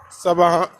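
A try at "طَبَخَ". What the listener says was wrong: Non, c'est pas sod là. C'est pas sod.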